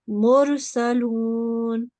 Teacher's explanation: there is a ra sakin here, and before it is a dhamma, then we will pronounce this ra thick. Mursalun. Again, ra sakin will be pronounced thick if the letter before it is a blank alif.